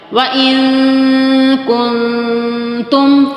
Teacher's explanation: زبان کی جڑ کا وہ حصہ جو منہ کی جانب آ رہا ہے، اوپر تالو سے لگتا ہے تو کاف ادا ہوتا ہے. تو یہاں پر ہم نے تالو پہ لگانا نہیں ہے.